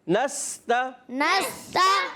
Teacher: سین کو سیٹی کے ساتھ